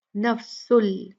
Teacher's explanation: फिर ये आप देख रहे हैं तनवीन है सीन पे, उसके बाद लाम आया है, तो यहाँ पर हम तनवीन को लाम में मुदगम करेंगे, और बिल्कुल ही बगैर गुन्ना जो है ये मुदगम होगा